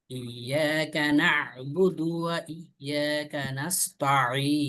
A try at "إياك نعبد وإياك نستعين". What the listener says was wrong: কানাস হয়ে গেল, মানে সিনটা সদের জায়গায় চলে গেছে। কানাস্তাইন, এখানে মোটা করার দরকার নেই, গোল করার দরকার নেই। কানাস্তাইন, এইভাবে।